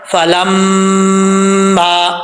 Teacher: میم مشدد ہے، فلما، ایک الف کی مقدار غنہ کریں گے اور ایک الف کی مقدار لمبا بھی کریں گے